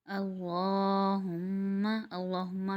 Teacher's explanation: اللہم، اللہم میں اللہ کا نام کے اوپر کھڑا پر اس کو ہم کھینچیں گے ایک الف مقدار، اللہ، اور ہما میم مشدد ہے تو میم مشدد پر بھی ہم ایک الف مقدار غنہ کریں گے، کیونکہ میم ہونٹوں سے ادا ہونے والا حرف ہے